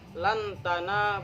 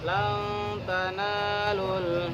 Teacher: Jadi bukan yang diingat-ingat itu bukan hanya samarnya, tapi harus didengungkan. Maksudnya didengungkan itu 3 harokat. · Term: bacaan ikhfa